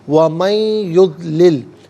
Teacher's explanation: وَمَن یضلل، من میں نون ساکن ہے، اسے یضلل کی یا کے ساتھ ملائیں گے. یا کی آواز کو غنّے کے ساتھ ادا کریں گے. یہاں پر بھی یرملون کا جو قاعدہ ہے وہ اپلائی ہوگا.